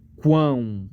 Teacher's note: ão termina com som de u ão isso aqui é semivogal justamente porque é um som fraco